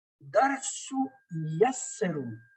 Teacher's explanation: تو تنوین کا جو نون کا تلفظ ہے نون غائب ہو گیا، نہ نون قطنی کی شکل میں آیا نہ بولنے میں آ رہا ہے